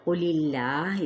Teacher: اس میں جلالہ کا لام باریک کیونکہ پیچھے زیر ہے